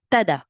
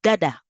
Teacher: une première mutation phonétique du T vers le D